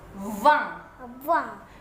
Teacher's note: Dalam pengucapan 20 itu gigi atas berjumpa dengan bibir bawah. Vingt. Itu V-nya harus kedengaran ya.